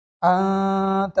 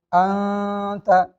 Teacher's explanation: اخفا کی مقدار 1 الف کے برابر ہے، یعنی ناک میں تھوڑی دیر آواز کو روکنا غنہ کہلاتا ہے۔ ہم ناک میں آواز کو تھوڑی دیر روکیں گے تو اخفا ادا ہو جائے گا